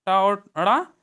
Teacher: इसी प्रकार टा और अड़ा मूर्धा से बोले जाते हैं